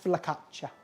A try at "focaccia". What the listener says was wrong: There's no L when anyone pronounces that. No, focaccia. Well, I would say that's what in Alabama.